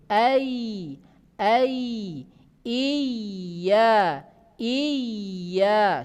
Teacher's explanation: lidah bagian tengah sudah tadi menekan ke langit-langit atas tetapi lebih renggang dari posisi shin